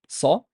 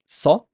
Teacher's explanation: The sa has a fatha, so we notice how the sa is velarized. Sa is emphasized, it's heavier, it's like o.